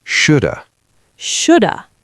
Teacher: Should have becomes shoulda. The H is gone, the V is gone, it's just the schwa.